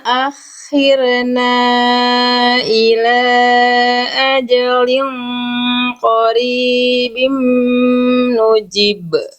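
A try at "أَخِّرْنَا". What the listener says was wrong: Paling nanti sedikit Bunda, ini bukan kesalahan besar, cuman karena terdengar tadi, jadi huruf ro sukun di sini banyak orang juga melafalkan tanpa sadar memantulkan ro. Akhirna, akhirna, bukan akhirna, akhirna, bukan akhirna. Nah, jangan rena, tapi khirna, bukan khirna, rena. Nah, itu ro sukunnya tanpa disadari ada mantul. Jadi kenapa tadi roh sukun yang Bunda sebelumnya itu mantul?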